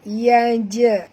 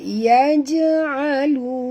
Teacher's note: jim mati di tengah-tengah kalimah. Qalqalah surah.